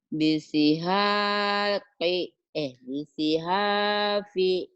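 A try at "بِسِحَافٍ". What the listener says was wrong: P-nya pendek, Bu.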